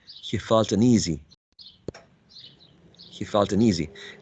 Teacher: easy will be the tonic syllable